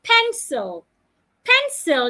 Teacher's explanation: it has two syllables you should stress the first part pencil pen must be said louder longer and clearer